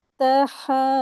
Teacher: واو مدیہ ہے، 2 حرکات کھینچیں گے